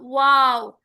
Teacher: दोनों होंठ आपस में बाहर की तरफ निकलेंगे तो ये अदा होगा